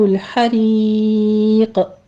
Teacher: عذاب الحریق، یہاں بھی ہم نے ہا کو وسط حلق سے ادا کرنا ہے، رو باریک پڑھتے ہوئے یا مدہ ادا کریں گے، اور یا مدہ کے بعد چونکہ ہم عارضی طور پہ وقف کرنے لگے ہیں تو یہاں پر بھی قوف ساکن ہو رہا ہے، قوف کے اوپر ہم قلقلہ کر لیں گے اور مدارس وقفی ہوگی جس کو ہم نے 6 کاؤنٹ کرنا ہے۔